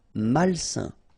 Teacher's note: A-I-N together, it's a nasal and it's un.